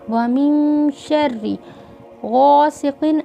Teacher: غین حروف مستعلیہ ہے اور قاف بھی حروف مستعلیہ، اس لیے دونوں کو ہونٹوں کو گول کر کے پڑھا گیا ہے